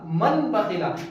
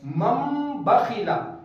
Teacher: یہاں پر نون کی آواز کو سائلنٹ کر دیں گے بلکہ نون کی جگہ پر میم کی آواز لائیں گے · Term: اقلاب